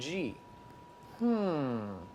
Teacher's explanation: And G. back of the tongue sealing with the soft palate, also blocking the mouth, putting the air up into here.